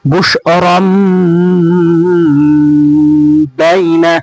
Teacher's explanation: দেখুন এখানে তানভিনের পর বা এসেছে, তাই ছোট্ট মিম দ্বারা তানভিন পরিবর্তিত হয়ে গিয়েছে। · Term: ইকলাবের